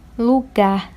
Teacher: Lugar, não é lugar, é lugar. A última sílaba, o gar, que é tônica, então é uma oxítona.